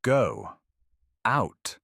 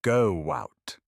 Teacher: The invisible w. If the first word ends in an o or u sound like go, do you, we add a small w.